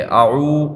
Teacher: واو مدہ کے ادا ہوتے وقت ہونٹ گول ہو جاتے